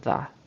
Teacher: there was a a d instead of a th when she said the word 'the'